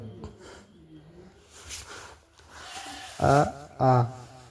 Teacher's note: अ आ का उच्चारण स्थान कंठ है। यह घोष है और अल्पप्राण।